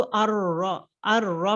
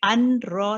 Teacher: यहाँ पे देखिए नून साकिन के बाद रॉ आ रहा है तो अर रॉ पढ़ेंगे, अन रॉ नहीं पढ़ेंगे, नून इज बीन ड्रॉप्ड इन लाम एंड रॉ, बिकॉज नून को गुन्ना हम लोग नहीं करते, रॉ, लाम और रॉ में नून का गुन्ना नहीं होता है, बिला गुन्ना है वो